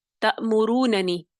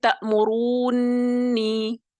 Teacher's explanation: آسانی کے لیے کیا کیا گیا کہ پہلے نون کو دوسرے نون میں ادغام کیا گیا. ادغام کرنے کے لیے ہمیں نون کا فتحہ ختم کرنا ہوگا. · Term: ادغام کبیر